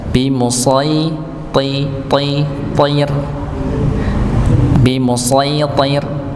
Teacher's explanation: Bimusitir nih huruf shya ditebalkan ng masuk kepada huruf ya sama tidak dipanjangkan. Berikutnya huruf th tebal sedangkan rnya tipis